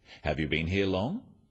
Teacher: Questions that start with have you are yes-no questions, so they have a rising tone.